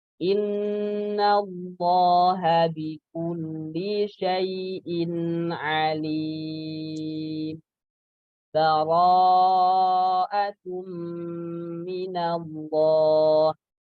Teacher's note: Saktah itu diberhentikan sejenak. Di akhir surah Al-Anfal itu dia berhenti sejenak tanpa ambil nafas. Kemudian langsung mulai bara'ah. Itu namanya saktah.